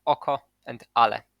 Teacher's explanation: Glottal stop will always be inserted before a word initial vowel until the speaker speaks extraordinarily careful, as in oko and ale.